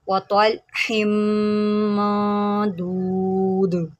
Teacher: दाल के ऊपर कलकला करेंगे